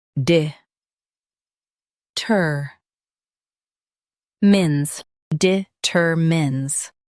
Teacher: Emphasize ter and keep mins soft.